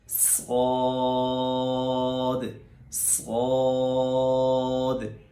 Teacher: صاد میں سیٹی نکالنے کے بعد اس کو موٹا کیا جائے گا۔ میں اس حرف کو انشاءاللہ بعد میں بھی ڈیفائن کرتا ہوں، اب یہی سمجھ لیجئے، بس سیٹی نکالی جائے اور موٹا کیا جائے، صاد صاد، پڑھیے میرے ساتھ، صاد صاد۔